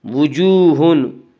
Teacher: وجوہن واو مدہ وہ واو جو ساکن اس سے پہلے پیش ہو، واو مدہ کو ایک الف کے برابر کھینچ کر پڑھیں گے